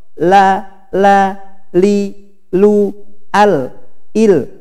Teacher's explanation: pada lam suara dari tengah belok ke kanan dan kiri lidah karena terhalang ujung lidah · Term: al-inhiraf